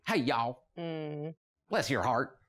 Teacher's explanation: there's a drawl and an elongation and a slowness to a Southern accent